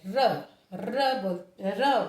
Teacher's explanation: र बोलेंगे तो जीभ हमारी ऊपर तालु के स्पर्श करेगी और नीचे को घूम करके गिरेगी, तो यह लुंठित कहलाता है, लुंठित व्यंजन।